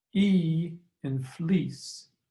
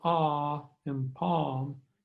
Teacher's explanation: e in fleece is a high front vowel while ah in palm is a low back vowel